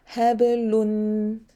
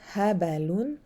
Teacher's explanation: Really, it is shorter than normal haraka. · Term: qalqala